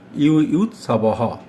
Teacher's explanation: সংস্কৃতে অন্তঃস্থ জয়ের উচ্চারণ ইয় হয়, তাই যুযুৎসবঃ না বলে আমরা বলবো যুযুৎসবঃ।